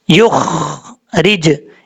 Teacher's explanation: अब यहाँ पर बाज़ों का लोग पढ़ते हैं युख रिज, ख्वा में कलकला कर जाते हैं, ख्वा में कलकला नहीं करना, ख्वा को सिर्फ पुर पढ़ना है, युख रिज, इस तरीके से पढ़ना है। रा के नीचे ज़ेर रा बरीक पढ़ा जाएगा, जीम कलकले के साथ पढ़ा जाएगा।